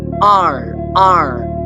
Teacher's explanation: If it is for American the R sound is being curved backward R R but for the Indian and for the British the R is usually silent sound.